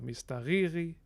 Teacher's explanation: And the stress here is on the penultimate syllable, ri.